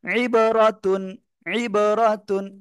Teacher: আইনটা গলাটা চেপে পড়তে হবে